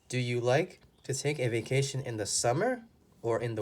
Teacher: because it's an or question the last word your voice goes down